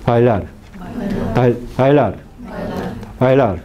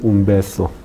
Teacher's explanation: es una consonante oclusiva más suave que la consonante oclusiva que existe en coreano. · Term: semi-oclusivas